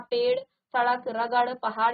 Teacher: जीवा ऊपर उठकर मूर्धा को स्पर्श करती है करती हुई तुरंत नीचे गिरती है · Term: अतिरिक्त व्यंजन